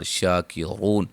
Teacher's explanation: میم ساکن کا اظہار، شاکرون شا مد اصلی، را کو موٹا واو مدہ اور را کو موٹا ادا کریں گے